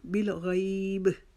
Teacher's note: اس کا آخری حرف قاف تا با جیم دال میں سے کسی حرف پہ ختم ہو رہا ہے اور وہاں پہ قلقلہ کر کے اپنی آواز کو ختم کیا جاتا ہے